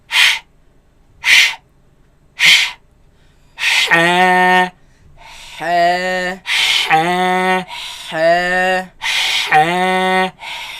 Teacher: this epiglottis moves against the back of the throat, leaving a very narrow passage, a very tight passage from which the air passes through. And that is what produces this sharp sound.